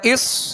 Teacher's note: صاد میں سیٹی کی آواز پیدا ہوگی اور صاد کو پر پڑھیں گے